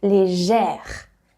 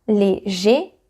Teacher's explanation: So you don't need any accent because it is E. Légère, to have that sound E, very open